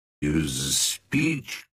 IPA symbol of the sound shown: ə